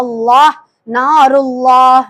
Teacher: அந்த அல்லாஹ்வை நாம என்ன செய்யணும் வாய் நிரம்ப சொல்லணும் வல்லினமா சொல்லணும்